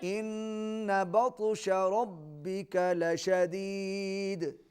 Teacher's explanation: نون تشدید کے ساتھ ہے, غنہ ہوگا